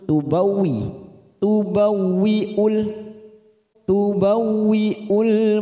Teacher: wau yang bertasdid ya jangan ditekan lama-lama